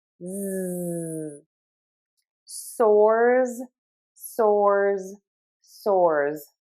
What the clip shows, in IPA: sɔrz